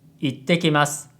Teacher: You need a silence between I and te.